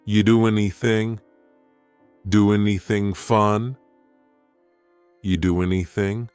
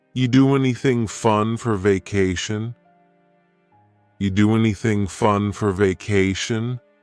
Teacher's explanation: then the next word anything we sometimes drop the A and we're going to push those two together because there's two n sounds side by side